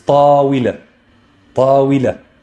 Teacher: The waaw is going to be pronounced as a consonant, and here it has a kasra, therefore it's going to be we.